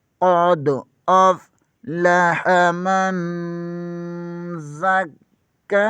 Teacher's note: حرف اخفا میں سے آ رہا ہے، یہاں پر اخفا ہوگا، زا حرف صفیریہ میں سے ہے، یہاں پر زا کا مخرج سیٹی کی آواز سے نکالیں گے ، زا زبر کو کاف کے ساتھ ملائیں گے، کاف مشدد